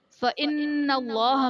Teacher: نون مشدد ہے، یہاں پر غنہ کر کے پڑھیں گے